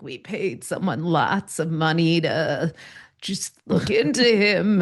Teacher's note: has this bizarre vocal fry